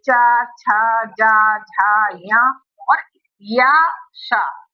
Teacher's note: जीभ हमारी किसको स्पर्श करती है? तालु को स्पर्श करती है, तब ये शब्द बोले जाते हैं। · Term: तालव्य